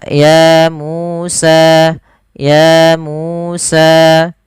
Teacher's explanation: Contoh ya Musa na kadang ada yang lebih panjang satunya tapi padahal dia tidak boleh harus sama ya Musa ya Musa. Harus sama panjangnya sepanjang dua harakat. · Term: mad thabi'i